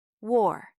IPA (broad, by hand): wɔr